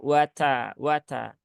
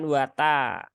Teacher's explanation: sifat Hames dari ta itu adalah sifat e lazimah maka dia harus ada baik dalam keadaan sukun ataupun berharakat maka wat wat bukan wata kalau Wat hamesnya enggak kedengaran ya